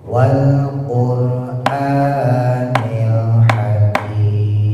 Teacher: Nah, rnya jangan lupa ditebalin. Rnya sukun jatuh setelah doma. Wal rnya dimonyongin, ditebelin.